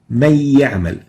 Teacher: So من يعمل to من يعمل is idgham. And here we're converting the noon into ya and joining the two yas to produce a stressed ya